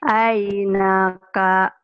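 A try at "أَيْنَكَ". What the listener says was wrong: Aina, ainaka, nggak ada yang panjang. Ainaka.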